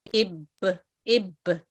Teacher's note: जब हम बा की आवाज निकालना शुरू करते हैं तो हमारे जो होठ हैं, दोनों होठ वो आपस में मिलते हैं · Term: कलकला